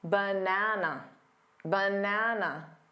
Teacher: the middle syllable is the stressed syllable it's the one you hear the loudest and longest that also means that the unstressed syllables need to be quicker